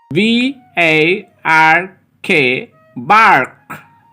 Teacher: American নিয়মে এ equal to আ হয় এবং আর এর উচ্চারণ গাঢ় করে হয়।